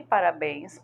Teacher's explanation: vogais tônicas é e o são abertas e também e parabéns porque a vogal é tônica e nasal